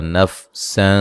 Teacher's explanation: یہاں باریک سیٹی سے نون سین کو ادا کریں گے